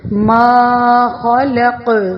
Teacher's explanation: ساکن جو کاف ہے حروف کلکلا میں سے ہے اور اس پر ہماری آواز لوٹتی ہوئی محسوس ہو